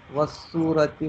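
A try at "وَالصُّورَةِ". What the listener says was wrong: वाक के ऊपर फतह पढ़ लें तो बेहतर है।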